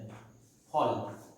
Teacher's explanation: এইটা দুখানা ঠোঁট দিয়ে আমরা উচ্চারণ করছি, ঠোঁটের সঙ্গে দাঁত স্পর্শ করে ইংরেজি মাফিক কিন্তু আমরা উচ্চারণ করছি না